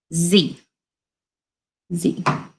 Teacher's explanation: teeth and instead of just blowing air through our front teeth you have to turn our voice on so it makes a buzzing sound